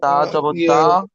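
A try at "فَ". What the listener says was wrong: তা নয় ফা।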